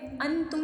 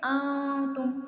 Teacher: کیونکہ نون ایک نون ساکن ہے اور اس کے بعد حروف اخفا کا لفظ تا آ رہا ہے، تا آ رہا ہے، اس لیے یہاں ہم کریں گے اخفا، یعنی کہ نون کو چھپا لیں گے، ظاہر کر کے نہیں پڑھیں گے۔ انتم نہیں پڑھیں گے، انتم چھپا لیں گے۔